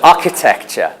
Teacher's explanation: architecture with stress on the first syllable